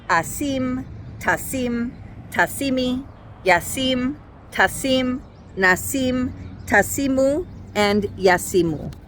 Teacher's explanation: the yod doesn't sound like a Y sound. It doesn't get a vowel of its own. It's just there sounding like E.